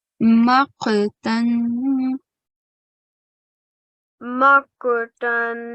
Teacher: Again, don't forget this qaf has a thick sound.